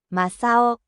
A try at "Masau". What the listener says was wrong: You have to you have to prolong the a little bit.